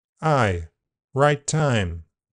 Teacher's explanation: In general American, a front starting place is typical. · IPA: /aɪ/, [aɪ]